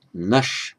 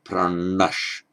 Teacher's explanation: then the n, the gentle n, becomes the retroflex n. So nash, but pranash.